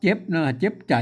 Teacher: เจ็บนี่มันออกเสียงตามสำเนียงไตยวนเชียงใหม่นะครับเจ็บนะครับอ่านออกเสียงจัตวานะครับ